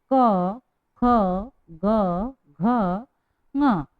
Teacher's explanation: क, अंदर से आवाज आ रही है, इसलिए कंठ से जब ध्वनि बाहर होती है तो उन वर्णों को हम बोलते हैं कंठस्थ, कंठव्य व्यंजन।